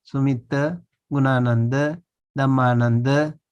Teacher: those ending with A, the short A, is always pronounced as a closed mouth